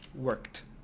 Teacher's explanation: The way we do that is by adding, let's change this, t at the end. So if you see a word ending k-ed, which is a very, very hard sound, we will change it to t